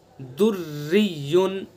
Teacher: दुर्रियुन रा मुशद्दद है और उसके नीचे ज़ेर है तो इसलिए इस रा को बारीक पढ़ेंगे